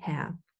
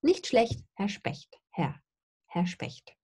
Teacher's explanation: I don't pronounce the R's in Herr. Herr, I have a deep schwa there.